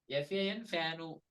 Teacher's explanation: Telugu language has the ukara, the u sound, the short u sound at the end of many words, unknowingly and unconsciously, what many Telugu people do is they add that u sound to the end of all the English words, or majority English words.